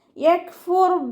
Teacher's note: കാഫ് ഉച്ചരിക്കുമ്പോൾ കുറച്ചൊരു air pass ചെയ്യണ സൗണ്ട് കൊടുക്കുക കേട്ടോ. കാഫിനും താക്കും സുക്കൂനാവുമ്പോൾ എയർ പാസ് ചെയ്യണ സൗണ്ട് കൊടുത്തിട്ട് ഉച്ചരിക്കുക.